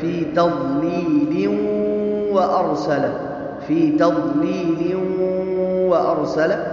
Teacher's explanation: فی تضلیل پہ دیکھیں، اگر ہم یہاں ملا کے پڑھتے ہیں فی تضلیل و ارسل، فی تضلیل و ارسل، تو اس صورت میں ملانے کی صورت میں یہ ادغام بالغنہ ہوگا، اس لیے کہ تنوین ہے اور تنوین کے بعد حروف یرملون میں سے حرف واو آیا ہے اور یہ ادغام بالغنہ کا حرف ہے، تو ملانے کی صورت میں یہاں ادغام بالغنہ ہوگا۔